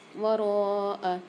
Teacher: را کے ساتھ الف اور مد دونوں ہیں تو یہاں پر 4 سے 5 الف کی مقدار را کو کھینچ کے پڑھیں گے